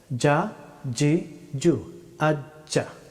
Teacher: জিম হরফটি উচ্চারিত হয় জিহ্বার মধ্যস্থল সোজা উপরের তালু